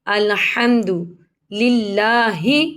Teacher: الحمد، ہا کو حلق سے ادا کریں گے۔ الحمد للہ، اللہ کے لام کو باریک پڑھیں گے زیر کی وجہ سے، اس کے نیچے زیر ہے تو اللہ کے لام کو باریک پڑھیں گے۔